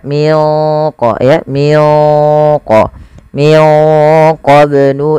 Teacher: sini ada bacaan ba sukun ya Itu ada bacaan Qalqalah sama membacanya sebagaimana tadi kita membaca huruf qf yang sukun yaitu wajib dipantulkan